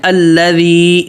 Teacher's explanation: لام پہ تشدید ہے اس کو پکڑنا ہے